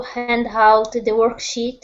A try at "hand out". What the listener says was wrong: Be careful about the H on out. This is just out, not hout. Okay? Hand out.